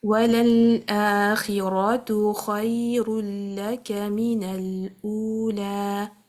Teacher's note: So making sure the kha is heavy, it's a letter of isti'ala.